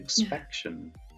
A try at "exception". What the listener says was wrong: Just misplaced the P, but yeah.